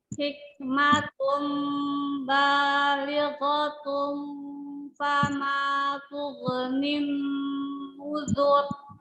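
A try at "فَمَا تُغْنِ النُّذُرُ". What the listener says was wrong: Ghainnya jahar ya, jelas. Tughnin, tidak tughnin, jangan dipantulkan. Wama tughnin uzur.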